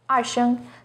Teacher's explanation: Second tone, 二 声, starts with a little lower pitch and goes up